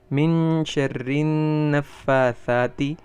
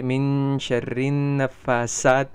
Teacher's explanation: یعنی ثا کی جگہ سین پڑھ دے